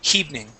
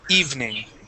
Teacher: I want to I want to practice eliminating that H and only pronouncing the vowel sound